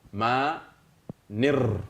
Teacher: Ici, on a une voyelle longue, un alif qui tire. C'est ça qu'on appelle alif flottant.